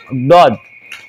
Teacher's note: huruf dod itu kan makhrajnya ujung lidah kita ada di mulut bagian atas dalam tuh